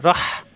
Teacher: রহ কন্ঠতে চাপ দিয়ে হা পড়তে হবে